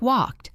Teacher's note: First we have the t sound. This happens after unvoiced sounds